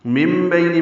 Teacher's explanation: نون ساکن کے بعد با آنے کی وجہ سے اقلاب ہے، نون کی جگہ میم پڑھیں گے. مم بینی، بئی عینین ہے.